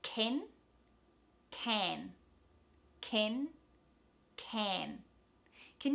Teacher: when you hit that n it needs to flatten out so essentially your ah squeezes into a bit of an e sound but not all the way